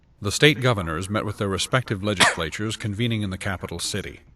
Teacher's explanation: in the word legislatures, the S is covered up and it's actually missing, it's absent. And instead, there's a cough. But you probably hear an S in that word. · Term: missing phoneme